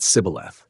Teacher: The Ephraimites cannot form the shesh sound correctly. Their dialect renders it sibboleth.